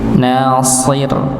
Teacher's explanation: Shisu ro sukun maka tetap ti tipis ya. Rnya tetap ti tipis shadnya yang tebal.